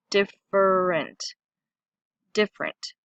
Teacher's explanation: For example, when we say different, we often leave out this little syllable right here, different, different. Our tongue moves quickly from diff over that ER into ENT.